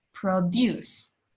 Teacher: that stress will be on the second syllable, sobre la segunda sílaba